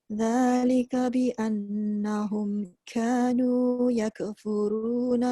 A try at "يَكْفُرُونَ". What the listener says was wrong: Jaga jangan terlebih. Yaka tu terlebih. Yak. Mati dan lepaskan angin saja.